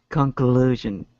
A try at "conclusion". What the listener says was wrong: Yay. Okay. Very good.